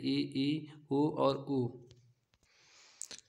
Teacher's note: उच्चारण में मुख द्वार लगभग बंद रहता है